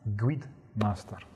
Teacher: The long vowels in master, God, very Aberdonian.